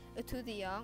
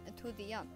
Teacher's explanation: Notice that the pronunciation between the two words for student differs for the two words. The T sound can't be heard in the male version, while it can be in the female version.